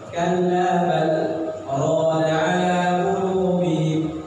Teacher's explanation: Jadi kalla bal, tahan nafas seukuran 2 harokat saja. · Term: sakat